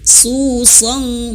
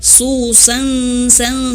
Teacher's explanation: Su song bukan hanya sekedar su sang sang seperti sin, tidak. Tapi tebal ya.